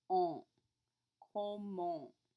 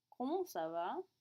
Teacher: Note that comment has a nasal sound at the end of it.